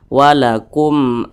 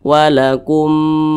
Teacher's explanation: bukan huruf ba bukan huruf mim maka hukumnya namanya izhar syafawi jadi dibaca jelas dan tidak berdengung · wakumukum seperti itu jangan didengungkan seperti ini wakumum Nah itu salah jangan didengungkan atau jangan panjangkan tapi dibaca jelas pendek saja